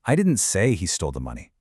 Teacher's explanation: Okay, now let's move the stress to the word say. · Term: contrastive stress